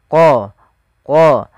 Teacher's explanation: lafal bacaan qola qola ini tebalkan huruf qof-nya qo dari mana makhraj daripada huruf qof yaitu pangkal lidah kita menempel dengan langit-langit atas